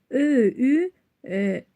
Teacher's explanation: Ö, ü dodaqlanan incə saitdir.